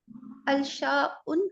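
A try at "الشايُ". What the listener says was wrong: अशायु होगा ना, अशायु। अलिफ नहीं पढ़ा जा, लाम नहीं पढ़ा जा रहा, ठीक है ना। शीन क्या है? अशम्स की तरह, ये हुरूफ शमसी में से ना, तो अलशाउ नहीं बोलेंगे, अशायु, ठीक है।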